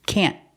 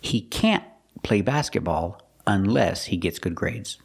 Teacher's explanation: don't worry about pronouncing the T can't we use a stop T can't the tongue goes up and stops the air he can't